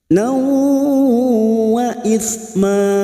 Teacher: fathah tanwin bertemu waw idgham biguna siap masuk dan mendengung masuk pada huruf berikutnya yaitu huruf waw dan mendengung selama 2 atau 3 harokat